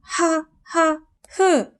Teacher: 성대에서 마찰이 일어나다 보니 인식하기 어려울 수도 있습니다. 히읗은 공기의 흐름이 성대를 통과할 때 마찰이 일어나면서 소리가 결정되기 때문에 마찰음으로 분류합니다. · 성대에서 소리 납니다. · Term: 목청 소리